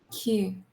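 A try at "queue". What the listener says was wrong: not complete key u but a shorter a crisper one key not q इसको crisp रखो बहुत crisp it's very short key key वो practice हो जाएगा धीरे धीरे मैं बताऊंगा ठीक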